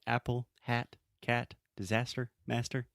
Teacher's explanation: the first sound is that really open ah sound that we have in English